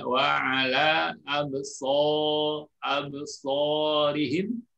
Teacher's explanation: kita tahu huruf shad keluarnya dari ujung lidah. Ujung lidah antara gigi atas dan bawah. Ya. Di situ keluar huruf shad dengan sifat desis atau sofirnya.